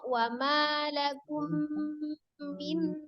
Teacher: Wa ma lakum min nasirin. Mim sukun ketemu dengan mimnya itu juga gunnah